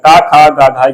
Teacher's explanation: ये सब कंठ से उच्चारित होते हैं